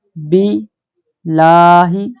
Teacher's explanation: یہاں اللہ کا لام باریک پڑھیں گے، موٹا نہیں پڑھنا، کیونکہ با پر زیر ہے۔